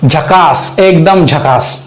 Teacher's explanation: तर हे झकास जे आहे ते हे य युक्त आहे